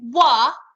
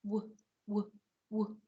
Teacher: We flick it away. So it's not wah, it's w, w, w. Okay, we're not adding that sound to the end of it. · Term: w sound